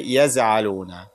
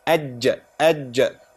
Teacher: Because the Jim comes from where? From the middle of the tongue. Ajja. We should not change the letter here.